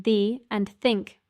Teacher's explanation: the th sound in the and think requires your tongue to be between your teeth